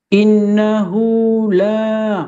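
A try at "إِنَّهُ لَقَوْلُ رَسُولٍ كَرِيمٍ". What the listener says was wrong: Lah itu tidak pakai harakat. Di situ tidak pakai ketukan. Innahu lakadalu rasulin karim. Gitu cara bacanya baru benar.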